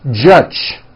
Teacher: many foreign speakers would pronounce the word judge as judge turning that last sound into an unvoiced CH